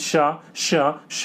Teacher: जिन वर्णों का उच्चारण करते समय वायु होती है वह तेज गति से ऊष्मा होकर निकलती है उसी वह उसमें व्यंजन कहते हैं जैसे कि ईशा ईशा ईशा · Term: ऊष्म व्यंजन